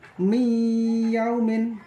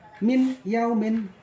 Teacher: Kalau aslinya kan min yaumin, tapi dibaca harus mi yaumin, masuk dengan disertai mendengung. Nun matinya dihilangkan, masuk langsung ke ya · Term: idgham bi gunah